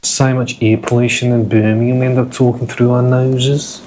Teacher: So Birmingham has a Brummie accent, it's a bit more of a nasally sort of an accent.